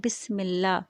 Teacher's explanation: بسم اللہ کا لام باریک پڑھیں گے کیونکہ میم کے نیچے زیر ہے